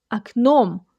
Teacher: the first o sounds like ah because the stress falls on the second syllable, so you say aknom.